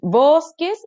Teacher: me doy cuenta que la sílaba tónica está acá en la penúltima